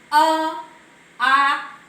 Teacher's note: देखिए इसमें हमारी जीवा कहीं भी नहीं टकरा रही है, सीधे ये कंठ से आवाज आ रही है। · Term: कंठ वर्ण